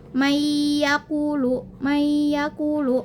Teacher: nun mati bertemu dengan huruf ya. Maka dia itu harus diidgamkan mayya samar-samar kan. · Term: idgham bigunah